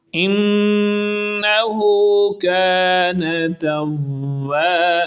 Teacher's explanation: انہ پہ غنہ کریں گے، نون پر شد ہے، غنہ کہتے ہیں آواز کو ناک میں لچا کر پڑھنا